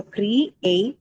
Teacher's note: Second syllable a is the one that carries the stress